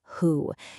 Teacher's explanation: the aspirate onset, which is super breathy, like when you say who.